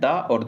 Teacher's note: दा और धा तालु नहीं होता है, दा और धा ये दंत होता है, दंत वर्ण है ये